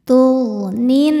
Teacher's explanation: Sebab alif lam menghadapi huruf syamsiah yaitu nun. Cara bacanya alif lam tidak dibaca. Jadi kita leburkan atau kita masukkan ke nun disebut dengan idgham syamsi.